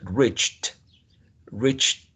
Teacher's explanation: The verb reach ends with ch, ch, the affricate voiceless ch, ch. So whenever you find voiceless as consonant sound at the end, you need to add t, which is voiceless.